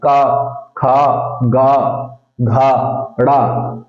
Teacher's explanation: ये जो आवाज निकल रही है डायरेक्ट कंठ से निकल रही है ठीक है गले से आ रही है